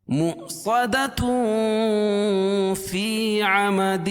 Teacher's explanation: اگر مؤصدۃ کو فی عمد کے ساتھ ملا کے پڑھیں گے تو اخفاء حقیقی ہوگا